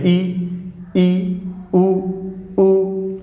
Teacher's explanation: close, approximately close, एकदम लगभग बंद मुंह